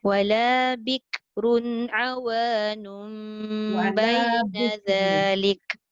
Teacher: awanum iqlab tu wajib didengungkan 2 harakat